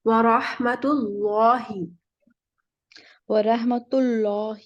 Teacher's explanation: لام موٹا پڑھیں گے نا، پیش ہے نا پیچھے اللہ کے نام کے پیچھے